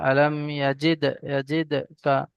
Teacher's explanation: ডালের উপরে সাকিন এসছে, কফ, ত, বা, জিম, দাল, এই পাঁচটি অক্ষরের মধ্যে থেকে দাল এসছে, দালের উপরে সাকিন আছে, এখানে ঝাটকার সঙ্গে একটু কলকলা করে পড়তে হবে। আলাম ইয়াজিদ, ইয়াজিদ কা।